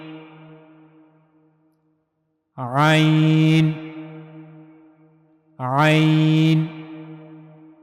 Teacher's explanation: आइन की अदायगी के लिए गले का दरमियानी हिस्सा इस्तेमाल होगा।